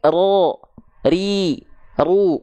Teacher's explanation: dia bergetar, tapi hanya sedikit saja. Mungkin hanya 1 sampai 2 getaran saja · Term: takrir